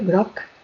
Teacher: estoy pronunciando una C que sería una oclusiva sorda, pero en el momento en que la uno a la vocal de la palabra siguiente, digo groc, ga, ga, ga, ¿vale?